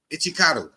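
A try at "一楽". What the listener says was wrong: No, Ichiraku. You see that Ichikaru. There's no C in that shit. There's an R right there. No, you said Charu. You said Charu. There's no C right there.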